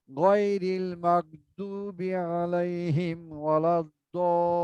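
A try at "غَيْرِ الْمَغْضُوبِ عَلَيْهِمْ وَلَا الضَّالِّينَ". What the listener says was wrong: আরো একটু টানতে হবে। শ্বাস যদি না থাকে তাহলে পড়বেন গয়রিল মাগদুবি আলাইহিম ওয়ালাদ্দাল্লিন। এখানে একটু শ্বাস নিয়ে নেবেন।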